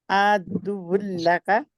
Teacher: نون کا بالکل ساؤنڈ بھی نہیں اس میں آئے گا، کیونکہ لام اور را کے اوپر ادغام گننے کے بغیر ہوتا ہے.